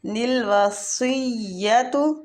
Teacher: للوصیۃ سواد مستعلیہ پور پڑھیں گے